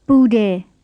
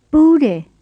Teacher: You need to make it go low low and not high low, because bude with the low low tune means to be hot, and bude with the high low tune means to be stuck together.